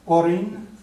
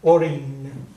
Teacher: it's similar to an NG sound in English but you don't quite go as far as a g